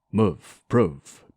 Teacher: words like move prove and doom are considerably clipped